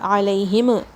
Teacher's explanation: میم پہ کوئی غنہ نہیں ہے یہاں پہ، اور میم شیک نہیں ہوگا. علیہم، ہم ایسے نہیں بولنا ہے.